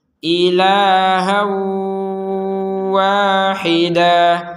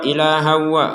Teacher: jadi dengung dulu ya durasinya itu dua harakat ya panjangnya bukan memanjangkan tapi memberikan jeda agar dengungnya Sempur sempurna